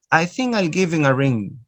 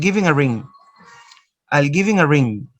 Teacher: the ha is often not pronounced the same is true for words like his him her